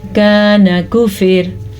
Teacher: रॉ बारीक पड़ी जाएगी क्योंकि रॉ से पहले ज़ेर है, रॉ साकिन से पहले ज़ेर है।